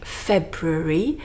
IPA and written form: ˈfebrʊri (February)